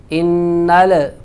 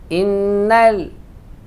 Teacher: لام ساکن ہے، اس میں آواز کو ہلائیں گے نہیں، قلقلہ نہیں کریں گے